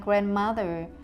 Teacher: An English word like grandmother has 3 syllables, and the stress is on the first syllable, grand.